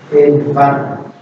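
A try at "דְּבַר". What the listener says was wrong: Edvar. Sekali lagi, ketika membaca diawali dengan konsonan. Debar, bukan Edbar tapi debar.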